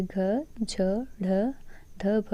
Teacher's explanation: ऐसे व्यंजन जिनको बोलने में अधिक प्रयत्न करना पड़ता है और बोलते समय मुख से अधिक वायु निकलती है। मीन्स प्रत्येक स्पर्श व्यंजन वर्ग का, मतलब क वर्ग, च वर्ग, त वर्ग, ऐसे तो ये सम स्थान वाले व्यंजन जो होते हैं वो महाप्राण होते हैं।